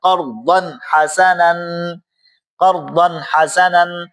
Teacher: تنوین کے بعد حروف حلقی میں سے ہا آ رہی ہے، تو یہاں پر بھی ہم غنہ نہیں کریں گے، اس کو پڑھیں گے ہم قرضا حسنا، قرضا حسنا.